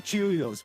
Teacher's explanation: it's actually Cheerios with the emphasis on the second syllable